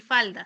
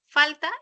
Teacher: Oclusivos, uno es sonoro y el otro es sordo.